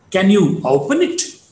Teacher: The ending word it is to be marked with the rising tone at the bottom.